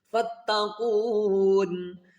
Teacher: قاف واو پیش کو ہم 3 الف کی مقدار کھینچ کر نون کے ساتھ ملائیں گے اور نون ساکن کریں گے، کیونکہ سٹاپ کریں گے تو اس کو 3 الف کی مقدار کھینچ کر نون کے ساتھ ملایا جائے گا.